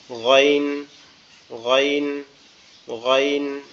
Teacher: এরপরে আইন, আইন হচ্ছে আমাদের কণ্ঠনালীর মাঝখান থেকে, কণ্ঠনালীর মধ্যখান থেকে উচ্চারিত হবে আইন, আইন, কণ্ঠনালীর মধ্যখান থেকে উচ্চারিত হবে আইন এভাবে, আইন, আইন এভাবে, আইন। আর গইনটা হচ্ছে আমাদের কণ্ঠনালীর শেষ ভাগ হতে উচ্চারিত হবে